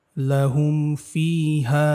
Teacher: এই যে লাহুম একদম স্পষ্ট, কোনো গুণনা করিনি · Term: মিম সাকিনে ইজহার